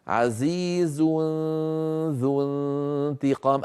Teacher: أنتقل من مخرج الزاي في كلمة عزيز إلى مخرج الذال في كلمة ذو، ويبقى من التنوين غنته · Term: إخفاء